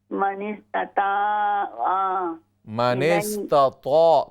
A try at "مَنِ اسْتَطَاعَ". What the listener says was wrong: طا کو موٹا کریں، من استطاع